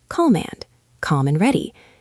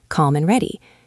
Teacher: Notice how the D in and almost disappears when we say it quickly.